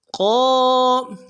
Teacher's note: قاف کو موٹا کریں گے, قاف کے ساتھ الف مدہ ہے, ایک الف دال میں کھینچیں گے